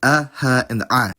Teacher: the consonants in question are alef, hey, and ayin (or to give you their phonetic representations, [ʔ] [h] and [ʡ])